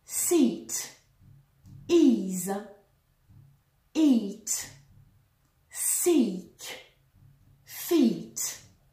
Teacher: Là, il va falloir absolument bien allonger ce I, sans essayer de faire ce que je viens de faire ici, bien allonger le I par rapport au I français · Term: I long